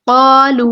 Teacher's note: بعد میں دیکھیں لام کے پیش ہے اور اس کے بعد واو ساکن ہے، یہاں پہ واو مدہ ہو رہا ہے، اس کو بھی ہم 2 حرکات لمبا کریں گے